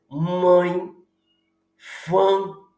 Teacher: Você não consegue falar fã sem vibrar, sem permitir que o ar circule por essa região das fossas nasais. Por isso que são fonemas nasalizados. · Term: fonemas nasalizadas